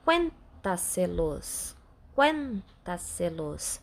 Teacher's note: Conseguimos observar aqui que a sílaba tônica é quen. Sendo a quarta sílaba tônica de trás para frente, essa sempre vai levar acento.